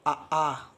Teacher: आ मुँह खुल गया, यानी कंठ से आवाज़ आ रही है ना, तो ये कंठ वाले स्वर हैं, कंठ स्वर, ठीक है।